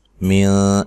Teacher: نون ساکن کا اخفا ہے، اخفا مع الغنہ ہے، باریک اخفا کرنا ہے